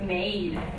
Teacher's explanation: And the changes that took place were that the long E was transitioned into an A